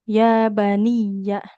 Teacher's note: jangan jadi nunnya yang panjang, tapi huruf ya-nya yang kita tekan dan alirkan suaranya